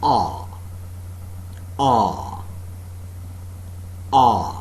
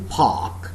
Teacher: part of the tongue between the center and the back is in the fully open position no contact being made between the rims of the tongue and the upper molars the jaws are considerably separated and the lips are neutrally open